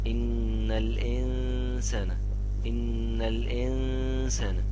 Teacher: أي نون يا جماعة تيجي في وسط الكلمة وما يكونش عليها تشكيل ما تتنطقش ونمدها حركتين